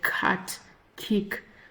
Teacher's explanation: it is pronounced by blocking the air in the back of your mouth and releasing it